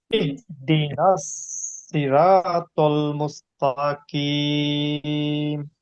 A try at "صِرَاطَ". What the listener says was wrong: রা হয়ে গেছে, রটা ঠিক করতে হবে। হ্যাঁ, রটা, রর উপরে জবর হলে কি হয়? মোটা হয়।